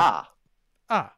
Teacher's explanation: the mandarin uh fourth tone and the hokkien uh that high falling tone is noted as five one so just all the way through